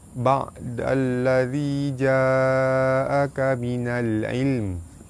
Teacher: Alif lam bertemu lam, hukum dia alif lam syamsiah, cara baca dia terus masuk ke lam yang kedua.